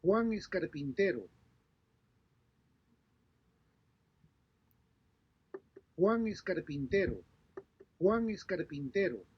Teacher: In Spanish, normal sentences or normal statements end in a falling pitch.